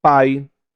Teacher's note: na palavra pai, você tem um encontro vocálico onde você vai ter uma vogal e uma semivogal